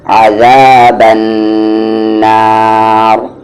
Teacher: رکیں گے تو یہ را ہیوی ہو جائے گا